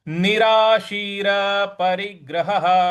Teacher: ह के बाद में जो विसर्ग है उसका भी ह उच्चारण निकलेगा तो इस प्रकार से हो जाएगा निराशीर परिग्रहः अब पूरे श्लोक को एक साथ पढ़ते हैं। · ह के बाद में जो विसर्ग है, उसका भी ह ही उच्चारण निकलेगा।